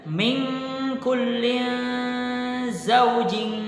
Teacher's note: nun sukun bertemu dengan Kaf kemudian kasrah tanwin bertemu dengan Zain kemudian kasrah tanwin pada huruf Jim bertemu dengan Kaf di sana terdapat hukum bacaan ikhfa yang kita membacanya samar